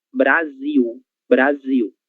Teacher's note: letras Ls, em final de sílaba terão som de U